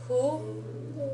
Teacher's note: Notice that the pronunciation on this one is a little off. It's not quite an H, but it's not an English style F either. It's somewhere in between the two. So the way you form this sound is you keep your mouth in an H kind of shape and try to say F.